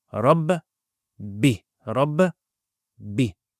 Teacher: So in Surah Al-Fatiha, Rabb, notice the Shaddah on the top, Bi. So you pronounce it as double.